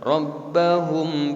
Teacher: dibacanya harus ditahan ya disamarkan ya suara mimnya kepada huruf Bah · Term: ikhfa